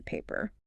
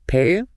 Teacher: In standard English, you pop your lips for that second P.